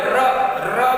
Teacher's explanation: જેનું ઉચ્ચારણ કરતી વખતે જીભ ધ્રુજે, ધ્રુજારી અનુભવે. ર બોલીએ એટલે જીભ છે એ ધ્રુજે એટલે એને પ્રકંપી કહેવાય.